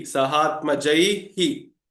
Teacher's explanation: So here jai is I, and the closest hrasva swara equivalent of I is E. So the visarga takes on h plus E becomes he